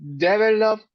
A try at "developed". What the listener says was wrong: Developed. En la segunda E va la entonación. Developed.